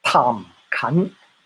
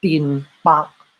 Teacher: Cantonese is aspirated in tones AB and unaspirated in tones CD.